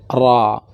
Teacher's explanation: ini keluarnya dari ujung lisan menyentuh gusi yang dekat dengan langit-langit. Maka kedengarannya seperti orang cadel. Ra. Tetap ada getarnya.